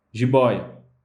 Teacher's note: Jiboia. Jiboia é uma palavra paroxítona, tem a sua sílaba mais forte da palavra posicionada na penúltima posição, tá? E essa sílaba mais forte, ela é um ditongo aberto, que é o oi.